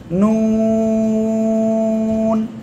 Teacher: জিহ্বার আগা, তার বরাবর উপরে তালুর সাথে লাগাবেন, লাগিয়ে 2 ঠোঁট গোল করবেন, গোল করে উচ্চারণ করতে হবে নুন।